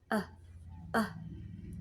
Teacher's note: this is the sound we make when we relax our lips, we relax our tongue, we relax the back of our mouth, and we relax our throat. And we just make a very, very short noise with everything relaxed. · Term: schwa sound